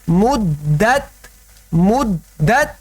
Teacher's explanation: یہ چونکہ تشدید والا حرف ہے تو کیسے پڑھنا ہے، رک کر پڑھنا ہے، ٹھہر کر پڑھنا ہے، جلدی سے ادا نہیں کرنا۔ مدت نہیں پڑھنا، مدت بھی نہیں پڑھنا، مدت مدت۔